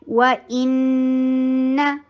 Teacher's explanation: جاتی ہے وَإِنَّهَا واو ہونٹوں کی گولائی سے ان حمزہ شدید نون کے اوپر تشدید کا ٹائم دیجیے غنہ کا ٹائم دیجیے